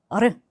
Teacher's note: 자, 우리나라의 리을과 비슷합니다라고 할 수 있지만이 어르는 약간의 혀에 떨림이 중요해요. 혀를 조금씩 진동을 하면서 발음을 한다라고 생각을 하시면 됩니다.